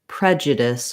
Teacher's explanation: First of all, looking at the word prejudice, we have first syllable stress. So the pre syllable is long and the judice syllables are short and have reduced vowels. Because the first syllable is stressed, the letter E is going to have the eh, like red tent sound.